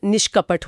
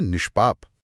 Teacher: अगर विसर्ग के बाद क, ट या प आए तो हमारी जीभ मुंह के ऊपरी और पिछले हिस्से की तरफ मुड़ती है। जिसे मूर्धा कहते हैं। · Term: मूर्धन्य श